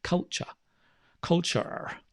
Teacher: culture, British English, we don't pronounce the R.